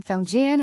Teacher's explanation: has a rising tone followed by a flat tone like opening a door and stepping into a calm stable space.